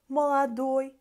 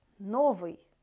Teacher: Ой, stressed ending, молодой, and unstressed, новый, ui ending